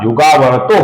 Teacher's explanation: युगावर्तः का जो विसर्ग है इसका ओ बन जाता है, अर्थात युगावर्तो हो जाता है।